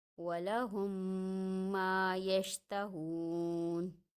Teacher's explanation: میم ساکن کے بعد میم مشدد آ رہا ہے، اور ہم نے قاعدے میں پڑھا کہ میم ساکن کے بعد میم مشدد یعنی کہ ادغام شفوی۔ یہاں ادغام کرنا ہے، غنہ کرنا ہے، ناک میں آواز کو چھپانا ہے